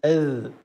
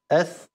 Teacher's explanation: هذه الحروف الثلاثه هي من طرف اللسان مع اطراف الثنايا العليا يعني الذال المنقوطه المعجمه نقول اذ والثاء المثلثه اث والظا اظ